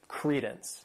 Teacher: This word has 2 syllables and the stress is on that first syllable.